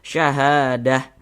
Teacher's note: kalau kita berwakaf, berhenti, kita tepat di huruf ta marbutah, maka dia akan menjadi H.